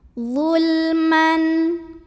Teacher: Lam sukunnya ini kita bunyikan dengan idhar, jelas. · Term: lam mutlak